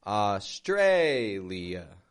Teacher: notice the contrast in the syllable stress there. How the tray goes strong.